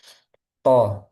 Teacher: ujung lidah bertemu dengan pangkal gigi seri atas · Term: makhrajnya huruf th